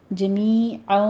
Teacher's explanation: جمی میں یا مدہ ہے، 2 کاؤنٹ کرنے ہیں